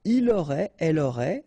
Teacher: final T not pronounced, so phonetically exactly the same form here